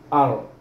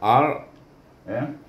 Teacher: kita baca ar dengan ra yang tebal